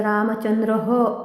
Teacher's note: पंक्तीच्या शेवटी येणाऱ्या विसर्गाचे उच्चारण ह सारखे केले जाते.